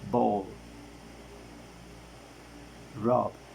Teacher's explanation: According of voicing is voiced. According of the place of articulation it is bilabial. According of manner of articulation it is stop.